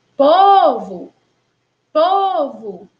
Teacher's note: O primeiro O, com som de O, escrito com O e com som de O, faz parte aí da sílaba tônica. Mas o segundo O faz parte da sílaba átona. Por isso, aí ele tem um som de U.